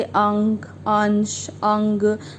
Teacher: अनुस्वर का उच्चारण करते हैं तो उस समय हमारे जो उसमें नाक से वायु निकलती है और मुख से कम